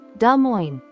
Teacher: the S is silent the proper way to say it is D Mo just two simple syllables